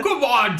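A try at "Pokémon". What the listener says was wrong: it's the emphasis.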